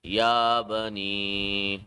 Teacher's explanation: standing Zabar, 1 second of stretching of Ya